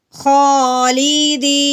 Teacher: या साकिन से पहले ज़ेर है, इसको हमने एक अलिफ के बराबर लंबा करना है